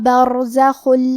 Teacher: ہمیں حرف الرا کو موٹی آواز میں پڑھنا ہے. خا کی ادائیگی حلق کے اوپر والے حصے سے ہے · مرج البحرین یلتقیان بینہما برزخ لا یبغیان. کلمت برزخن میں حرف الرا پہ جزم ہے تو یہاں را کا حکم تفخیم. ہمیں حرف الرا کو موٹی آواز میں پڑھنا ہے